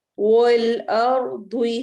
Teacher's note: رو کو ہم نے موٹا پڑھنا ہے کیونکہ رو ساکن ہے اور اس سے پہلے والے حرف حمزہ پر حرکت آ رہی ہے